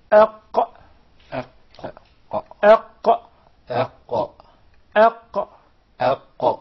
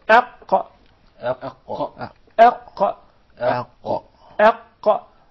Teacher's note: The farthest side of the tongue is elevated, and there is a move in the uvula. That's why the qaf and the kaf together were put in a group by themselves, and they were called al-huruf al-lahawiyya, because of this uvula, this conical tissue which is hanging from the middle of the soft palate.